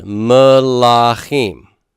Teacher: Where's my stress on melachim? It's at the end.